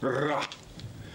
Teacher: Jourdain, quand il lui disait « Et l'air, en portant le bout de la langue jusqu'au haut du palais, de sorte qu'étant frôlé par l'air qui sort avec force, elle lui cède et revient toujours au même endroit, formant une manière de tremblement « ra ». Ça veut donc dire qu'au XVIIe siècle, on disait « ouais » et « ra ».